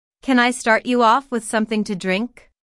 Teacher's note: with something to drink notice how the question starts with can since this is a yes no question the intonation Rises at the end